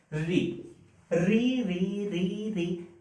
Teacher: जीभ ऊपर सट के नीचे आ रही है तो इसे मूर्धा बोलते हैं, तो री का उच्चारण स्थान जो है ये मूर्धा है।